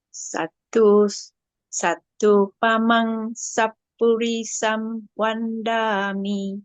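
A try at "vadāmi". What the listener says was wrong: Vadami. Yes, Vadami, not Vandami, Vadami.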